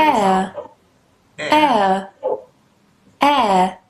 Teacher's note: এরপরে আমরা যাব, এই সিম্বলটাকে আমরা এয়ার জানবো, এয়ার। দেখেন প্রথমে এ সাউন্ড, এরপরে শোয়া, এয়ার, দুটো মিলে, ওকে।